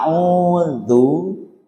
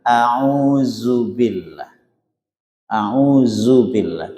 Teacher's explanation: mestinya diucapkan dengan sifat jahr dza bukan zaza gitu